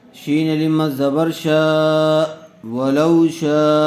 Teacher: لام واو زبر لو، ولو، شین لم زبر شا، ولو شا، واو ساکن سے پہلے زبر آیا ہوا ہے، اس لیے واو لین کا قاعدہ ہوگا، اس کو نرم آواز سے اور جلدی ادا کریں گے۔